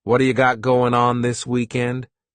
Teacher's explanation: This is really typical of American English where a t that's surrounded by vowel sounds is going to change to a d. It's called a flapped tea and it just rolls off your tongue in a smooth way.